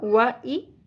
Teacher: واو کی زبر زیادہ نہیں کھینچنی، حمزہ زیر ای، یہ بھی مختصر ہوگا، و ای، equal to 1 count.